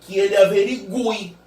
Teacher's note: que ele averigue com o som do U bem forte nesse caso. Com o som do U bem forte.